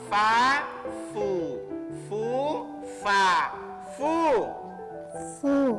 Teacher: mengucapkan huruf fa itu gigi atas menyentuh bibir bahagian bawah.